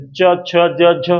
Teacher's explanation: जीभ जो है तालु से छू रही है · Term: तालव्य